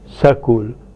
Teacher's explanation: For example, in Punjabi, the word school is pronounced as sakul. The insertion of the vowel a is between sa and ka. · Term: Epenthesis